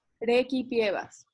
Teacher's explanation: En la C, lo importante es que me explicaran que era requipievas, no recipievas. O sea, la primera R suave y la C, ki y no si